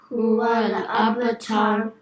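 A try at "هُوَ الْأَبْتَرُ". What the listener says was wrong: Yeah, and the ta over here has to be empty mouth, and the ra will be slightly full mouth. So don't say tar, because that'd be a major mistake. You'd make it changing the ta into ta. So huwal abtar.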